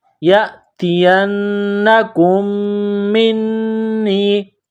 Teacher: میم اور نون مشدد پر غنہ کریں گے، آواز ناک میں چھپائیں گے